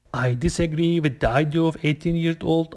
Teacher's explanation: you're using a rising tone at the end of each of your sentences stop don't do that your tone needs to fall when you